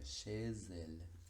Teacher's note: Parecido es el caso de chez elle, con che, que tiene una Z final, que como nosotros ya sabemos es muda, pero nuevamente, gracias al fenómeno de la liaison, toma sonido, tiene un sonido propio, y ese es el de la S, por lo que la pronunciación sería chez elle.